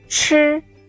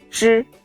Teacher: the air flow is stronger than ju